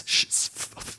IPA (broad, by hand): s sh f th